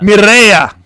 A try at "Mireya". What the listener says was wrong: You got to roll your R's better. You got to roll the R's.